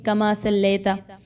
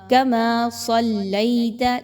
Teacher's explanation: لام زبر یا لئی، اس کو مجہول نہیں کرنا